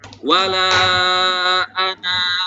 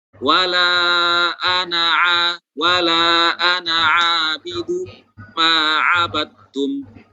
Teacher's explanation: maka ketika berhenti pada lafaz ana di sini, maka dibaca nunnya dibaca panjang 2 harokat. Kalau kita wasol maka dibaca 1 harokat saja.